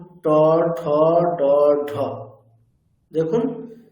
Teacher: জীবটা উপরের প্লেটের অনেকটা পিছন দিকে স্পর্শ করছে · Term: মূর্ধা